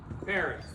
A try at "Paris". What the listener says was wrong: We don't pronounce the S.